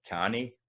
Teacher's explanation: So a word like canny, the stress is at the start.